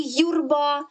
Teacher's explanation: буква ю у слові юрба позначає два звуки звук й звук у звук й приголосний м'який позначається двома рисочками звук у голосний ненаголошений